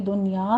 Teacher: آگے ہا کو وسط حلق سے ادا کرنا ہے، تو دنیا میں ہمارا قاعدہ ہو رہا ہے، پہلے دال پہ تشدید ادا کریں گے، دنیا میں اظہار مطلق ہوگا، نون ساکن کو ہم لمبا نہیں کریں گے۔